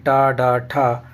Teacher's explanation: जो ध्वनि कहलाती है व मूर्धन्य कहलाती है इसलिए ट ड ठ जो ध्वनि है वह मूर्धन्य ध्वनि है